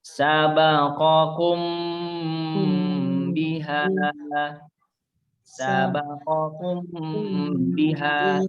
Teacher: Maka apabila mim mati atau sukun bertemu dengan huruf ba, maka cara membacanya harus disuarakan samar-samar di bibir dan didengungkan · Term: ikhfa syafawi